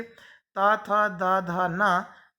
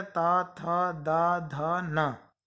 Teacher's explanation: इनको बोलते समय हमारी जीभ दांत को टच करती है। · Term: दंत वर्ण